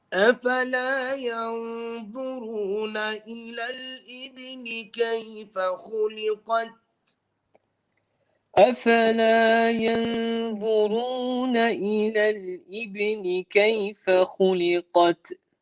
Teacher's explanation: So here, every ta we will be reciting with hams.